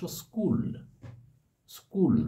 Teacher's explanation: ক এই যুক্ত ব্যঞ্জনের পূর্বে একটি স্বরধ্বনি এসে পড়লো স্কুল অর্থাৎ স্কু এর আগে একটা ই স্বরধ্বনি এসে উচ্চারণটাকে অপেক্ষাকৃত সরল করে দিল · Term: আদি সরাগম